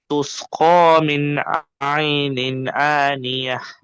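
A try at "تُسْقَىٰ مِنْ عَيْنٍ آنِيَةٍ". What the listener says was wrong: قاف کا مخرج صحیح ادا نہیں ہو رہا نا. تسقا، تسقا، خا نہیں، قا. تسقا من عین آنیہ.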